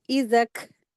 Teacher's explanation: यहाँ पर ना 2 अलिफ बने हैं तो इसको खींचना नहीं है, इसको डायरेक्टली ज़ाल को काफ में मिला देंगे